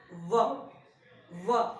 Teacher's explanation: this sound is called as labiodental sound. Because our upper teeth touches our lower lip when we pronounce or articulate this sound. It is V. V.